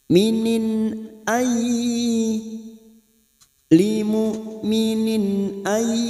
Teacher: idhar halqi dibaca jelas tanpa mendengung